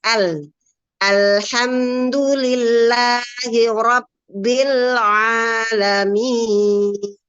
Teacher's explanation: Al ya dilebarkan lamnya tipis a-nya juga tipis dilebarkan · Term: huruf tipis